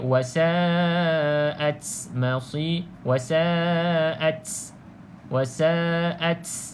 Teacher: dengar tak dia punya hams tu berlebihan seolah-olah ada tambahan huruf Sin pula